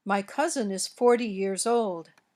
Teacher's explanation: the stress in T numbers like 40 is on the first syllable. The difference in stress causes a difference in the kind of t sound. · the sound in 40 is a voiced sound, a flap